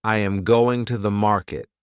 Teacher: the strong words are going and market. The small words are softer. This pattern creates rhythm.